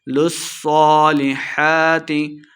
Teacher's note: صاد مشدد ہے، لام کو صاد کے ساتھ ملا کے پڑھیں گے